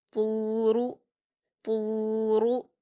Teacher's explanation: त्वा पर वाव मद्दा है, इसलिए हम इसको 2 हरकत खींचकर पुर पढ़ेंगे, क्योंकि त्वा हुरूफ मुस्तालिया में से है। · इसके बाद रा पर हरकत है, इसको हम जल्दी पढ़ेंगे और इसको पुर पढ़ेंगे क्योंकि रा पर पेश की हरकत है